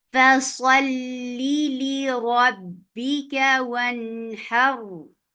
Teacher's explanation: A raw will get sifa of tawassut, and tawassut is a medium flow of sound, and you are making raw heavy too because there is fatha before it.